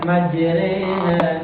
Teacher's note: fathah yang dimiringkan ke kasrah ya dan alif yang dimiringkan ke huruf ya. Dibaca seperti e orang timur. Jadi bacanya itu e ya. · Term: imalah